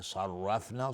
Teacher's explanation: صاد از حروف استعلاء است غلیظ تلفظ میشه